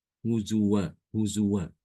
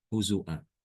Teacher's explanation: Jadi wawunya ini diganti dengan huruf hamzah. Harokatnya sama, tetap fathatain.